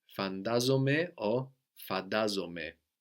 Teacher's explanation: this gives us either ND or D, depending on the dialect of Greek or the age of the person. D is used much more by younger people.